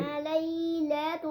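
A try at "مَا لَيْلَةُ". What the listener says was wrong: دیکھو ماں کو پھر جلدی پڑھ دیا آپ نے. آگے الف مد ہے بیٹا. ماں، اس کو بھی 1 سیکنڈ کے برابر کھینچیں گے. ما لیلۃ القدر.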